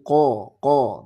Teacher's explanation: daerah jadi harus dirubah ya untuk Kanya jangan Ka tapi qo qo tebal dengan cara mengangkat rahang